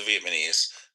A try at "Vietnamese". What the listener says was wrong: All right, you switched the N and the M in Vietnam, but to respond, you said Vietnamese. All right, you got to switch the letters there.